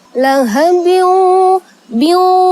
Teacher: Karena ada tanwin bertemu dengan huruf waw. Huruf waw di sini adalah huruf idgham bigunnah. Maka dibaca dengung